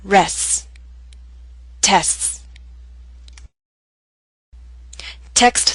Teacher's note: you need to lengthen the S sound make it long so that people can understand the words you're saying